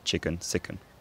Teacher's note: scouse has the two weak vowels merged in unstressed positions so that chicken and sicken rhymes something like chicken sicken the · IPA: [ə] and [ɪ]